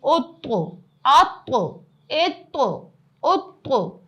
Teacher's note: ایک تو طا موٹا بھی پڑھا جائے گا, دوسری چیز کہ یہ قلقلہ والا حرف ہے تو اس پہ ہم نے اپنی آواز کو اچھالا, اپنی زبان کو اچھال کے پڑھا